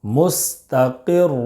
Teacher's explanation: را دو پیش رن، مستقر. را مشدد پر دو پیش کی تنوین ہے، اس لیے را کو پر پڑھیں گے